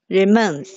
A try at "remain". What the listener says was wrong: 如 果 您 不 加 ▁S, ▁它 读 什 么 ▁？Remain, ▁remain, ▁a, ▁a, ▁remain, 它 不 是 读 ▁remains. Remain. ▁哎 ， 是 因 为 它 发 ▁a, ▁remain, ▁remain, ▁remain. 因 为 这 个 它 发 ▁a ▁remain